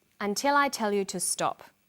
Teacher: Did you hear the falling tone at the end?